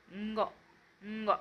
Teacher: आता व्यंजनामध्ये हे जे आहेत ते अनुनासिक आहे, ज्यांचा उच्चार नाकातून होतो, हे तुम्ही लक्षात ठेवायचं आहे. हा वाङ्मय मधला न आहे, याचा उच्चार नाकातून होतो, ंग, ंग असा उच्चार होतो.